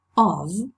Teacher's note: we pronounced the preposition of we said this type of with a voiced fricative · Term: voiced fricative v